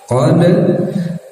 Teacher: Qad, dal sukun, dal bagian dari huruf qalqalah yang ketika sukun harus dipantulkan ya.